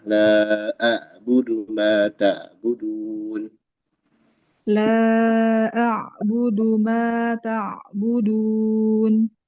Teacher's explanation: Ain itu di tengah tenggorokan ya.